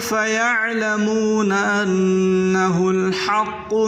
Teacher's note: عین کو حلق سے نکالیں اور حا کو بھی حلق سے